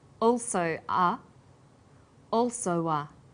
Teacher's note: This is linking type 2. Vowel plus w plus vowel.